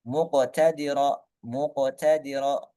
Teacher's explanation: Qaf di sini berharokat sukun, maka di sini hukumnya adalah qalqalah sughra.